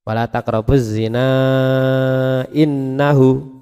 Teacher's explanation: Na dibaca panjang, panjangnya 2 alif setengah. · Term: mad jaiz munfasil